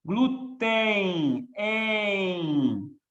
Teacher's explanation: Quando termina com EM ou EN, você tem um ditongo fonético. É um E nasal com I. Então, como eu tenho um ditongo fonético, a Marinha considerou que essa palavra é uma paroxítona terminada em ditongo, glúten.